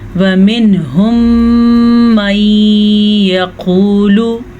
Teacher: मीम साकिन के बाद मीम मुतहरिक आ गया है तो फिर हम दोनों मीमों को आपस में मिला के पढ़ेंगे और गुन्ने के साथ पढ़ेंगे। कायदे का नाम इदगाम शफ़वी है।